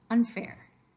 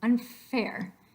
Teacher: mouth you are already getting ready to make that F so the N is actually pronounced while you are making the mouth shape of an F